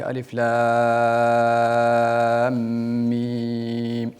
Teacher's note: at the beginning your alif lam mim has to be longer